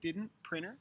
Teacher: is a tea that comes after an n like didn't printer the T becomes very small you can almost hear it but it pretty much goes away